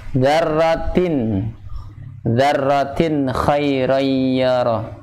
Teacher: Karena kha adalah termasuk yang menempati makhraj tenggorokan, halq. Ya, maka dikatakan izhar, jelas, jadi dibaca jelas. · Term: izhar halqi